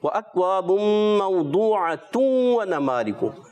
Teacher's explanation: اللہ، اچھی کوشش کی، مگر آپ نے کوشش یہ کرنا ہے وَأَكْوَابٌ مَوْضُوعَةٌ وَنَمَارِقُ. پیش نہیں پڑھنی، 2 پیش پڑھنی اور ادغام ہو جائے گا